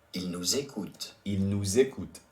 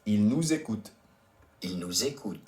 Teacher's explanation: And the reason we do la liaison there because écoute starts with a vowel, E. So we must do the la liaison between those two words.